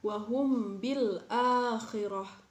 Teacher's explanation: mim mati bertemu dengan huruf ba Jadi dibacanya samar-samar